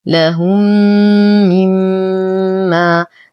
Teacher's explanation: نشد الميم بغنة أكمل ما تكون ونعطي المد الطبيعي بعدها حقه. · لدينا ميم ساكنة وبعدها أخرى متحركة فالحكم إدغام مثلين مع غنة أكمل ما تكون